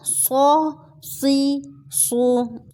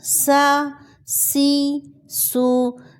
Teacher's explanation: صاد موٹا تھا سین باریک